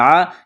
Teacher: گلے کے درمیان سے زور لگا کر عین کو نکالیں گے